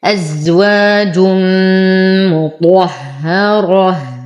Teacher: أفخم الطاء، أرقق الهاء، أفخم الراء لأنها مفتوحة. نقف على التاء المربوطة بالهاء الساكنة وقفا.